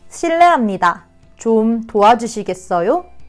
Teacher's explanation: so make sure to end it with an upward intonation